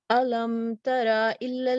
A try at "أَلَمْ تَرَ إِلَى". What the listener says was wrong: لام کو تھوڑا سا لائٹ کرو، آپ کو تھوڑا ہیوی ہو رہا ہے.